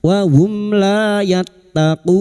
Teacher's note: Mim sukun bertemu lam alif idhar syafawi, mim sukun dibaca jelas tanpa mendengung